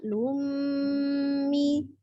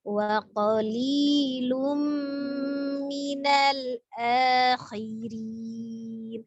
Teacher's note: Waqali ya, lum ya, tanwin dhamma tanwin bertemu dengan huruf mim, idgham bi gunnah ya. Idgham artinya dilebur, gunnah tadi didengungkan, maka dibacanya lummi ya.